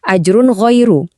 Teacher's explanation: suara N di akhir kata ajrun itu dibaca dengan jelas banget, nggak disamarin sama sekali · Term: idhar